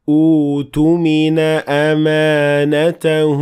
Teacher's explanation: the second Hamza will turn into the long version of the Dhamma, which is in this case, waw. So that's why we say, utumina amanata, when we start at that word.